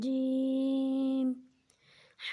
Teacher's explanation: جیم کو 3 الف کے بقدر کھینچ کر پڑھیں گے